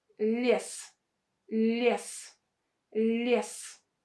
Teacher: we pronounce this ye as e with a softened l.